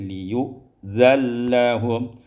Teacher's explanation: kemudian diidghamkan nun pada lam menjadi liyu'zallahum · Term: idghamun nun fil lam